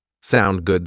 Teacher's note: native speakers will often shorten that just to sound good with a rising intonation